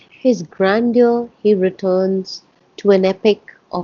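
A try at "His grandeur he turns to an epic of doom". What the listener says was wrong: no, oh no, no. He doesn't return. He turns. His grandeur. turns to.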